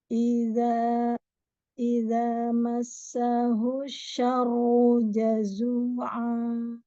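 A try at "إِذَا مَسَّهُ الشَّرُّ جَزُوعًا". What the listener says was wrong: Ya, masih fathah. Coba fathahnya dibuka lagi. Rahangnya buka. Itu kalau afwan, kalau bibirnya atau mulutnya sudah terbuka, tapi rahangnya nggak kebuka.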